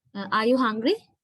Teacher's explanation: My voice is going up, which means in phonetics and phonology, we explain that as the rising intonation, using the rising intonation. Towards the end of the question, my intonation goes up. My voice level goes up.